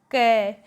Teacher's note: क को हम सीधा ही बोल सकते हैं, नासिके की जरूरत नहीं है।